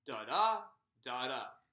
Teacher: So the first syllable is unstressed. The second syllable is stressed. This is an iamb.